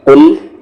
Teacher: یہ قاف ہیوی ہے اور یہ لام ہیوی نہیں ہے